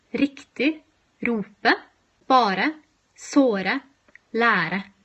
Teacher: it a rolling R but it's actually not a rolling R it's actually what we call a voiced alveolar flap which means that your tongue only briefly touches the back of your teeth it's actually a bit similar to the TT sound in butter